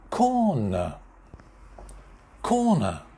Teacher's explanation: corner two syllables corner main stress at the beginning